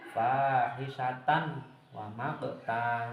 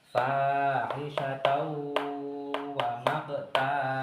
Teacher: memasukkan tanwin ini suaranya tanwin dirubah menjadi huruf wawu